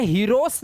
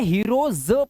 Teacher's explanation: सा की आवाज नहीं आएगी ज की आवाज आएगी ज के नीचे नुक्ता ज के नीचे नुक्ता ज हीरोज आप